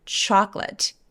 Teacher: 초콜릿도 chocolate, chocolate가 아니라 중간에 O가 없어져요